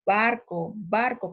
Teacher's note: para pronunciar la B, mis labios han tenido que juntar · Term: bilabiales